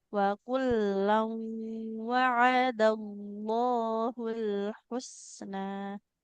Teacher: Tanwin ketemu wawu dileburkan dibuka huruf wawunya.